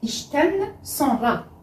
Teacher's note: on a choisi le T, puisqu'il y a ici une consonne sourde qui est le CHE, donc on choisit le T.